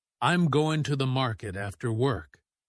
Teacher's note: The stress is on going, market, and work.